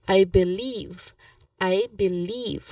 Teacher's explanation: when we stress the second syllable, as you have noticed, it has a longer e sound like leave · So believe second syllable is leave. So emphasizing it on that particular syllable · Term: syllable stress